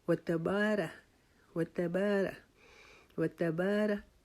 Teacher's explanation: را کو لمبا نہیں کرنا کیونکہ را کے اوپر زبر ہے، زبر زیر پیش کو لمبا کر کے نہیں پڑھا جاتا، اس کو حرکات بولتے ہیں، اس کو لمبا نہیں کرتے، وتبارہ وتبارہ وتبارہ کسمک کسمو کسمو نہیں، کسمو کا نہیں، یہ غلط ہے، وتبارہ کسمک وتبارہ وتبارہ کسمک وتبارہ کسمک وتا۔